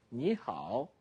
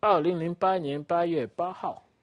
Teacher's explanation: Ni Hao, third tone. This Hao is the fourth tone.